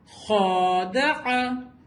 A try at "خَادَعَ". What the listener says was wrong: اس کو ہم الف کی طرح نہیں پڑھیں گے.